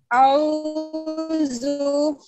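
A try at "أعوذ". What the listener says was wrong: আরেকটু আওয়াজ কমাইতে হবে হালকা। আউযু আউযু নো আউযু খুব খেয়াল করতে হবে। আউ লু জিব্বার আগা দাগেতে রাগা আউযু বিল্লাহি মিনাশ শাইতানির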